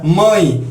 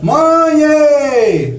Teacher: essa palavra comumente pronunciada nesse tom nasal, feita do inevitável M e depois do ditongo AE, que aflige os estrangeiros interessados em falar o português.